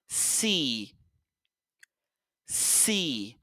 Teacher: les dents se ferment et puis on siffle de l'air